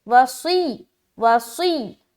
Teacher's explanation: यहाँ पर स्वाद की अदायगी मोटे तरीके से